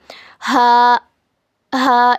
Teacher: हलक के नीचे वाले हिस्से से हा अदा होता है। It is pronounced from the bottom of the throat and the breath should go inside the throat. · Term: छोटी वाली हा